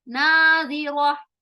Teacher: ٹھیک ہے, پھر ناظرہ, ناظرہ, نا نون الف نا, الف سے پہلے نون آ رہا ہے جو کہ حروف مستعلیہ نہیں ہے, حروف مستفیلہ ہے, تو اب اس کو ہم باریک آواز کے ساتھ ادا کریں گے, ترقیق کریں گے اس الف کو.